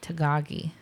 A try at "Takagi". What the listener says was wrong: Takagi. It's a K.